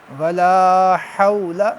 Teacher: لام کو لمبا کریں گے کیونکہ لام کے بعد الف ہے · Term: حروف مدہ